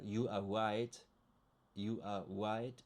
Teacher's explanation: It's just because my bad pronunciation of the English R. It sounds like a W.